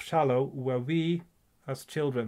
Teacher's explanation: so you get two syllables in a row that are unstressed